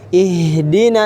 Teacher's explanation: H, dia tidak tebal. Sama-sama H. Hanya mengalir, kan? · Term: huruf H